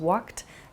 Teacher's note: You might hear a word like walked also, which has a sort of T sound about it.